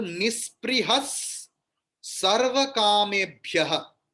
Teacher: Sa is there. So instead of visarga there will be another sa.